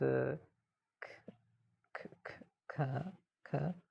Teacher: the sound in skin, which is a k unaspirated